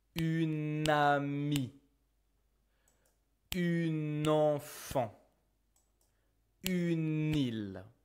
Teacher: whenever you use une in front of a vowel, you will still merge the sounds together.